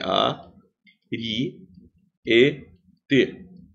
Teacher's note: Também é proparoxítono. A sílaba tônica é a antepenúltima.